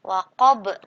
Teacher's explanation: salah satu huruf qalqalah yang berharokat namun dibaca sukun dan harus dipantulkan cara bacanya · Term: qalqalah kubro